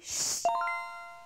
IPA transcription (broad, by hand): ʃ